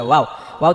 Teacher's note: ওয়াও এর মাখরাজ হচ্ছে ঠোঁট দুই ঠোঁট হইতে